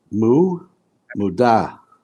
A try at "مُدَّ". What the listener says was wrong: Mudda. You must join. Where there's shadda, you must join the previous.